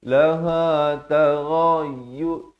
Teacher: ghain di hujung kerongkong.